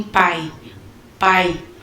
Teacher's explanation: um ditongo oral tá que quando o ar ele sai apenas pela boca